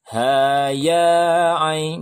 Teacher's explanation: Ha ya cukup ditekan saja karena dia dua harokat, jangan terlalu lama.